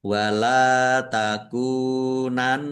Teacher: Nun tasdid dibaca gunnah atau mendengung, ditahan biar tampak mendengungnya. · Lam fathah alif mat tabi'i panjang dua harokat. Kaf domah wawu sukun juga mat tabi'i panjang dua harokat.